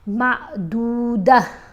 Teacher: जब हम वक करेंगे ना तो यह जो गोल वाली ता है इसकी आवाज हा में बदल जाएगी · اب یہ تو ہے نا، یہ علامت ہے کہ یہاں ہم وقف کر سکتے ہیں. جب ہم وقف کریں گے نا تو یہ جو گول والی تا ہے اس کی آواز ہا میں بدل جائے گی